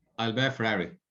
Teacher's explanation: you're stressing the word Ferrari a little bit more. Okay, but it's not a rising intonation. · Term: sentence stress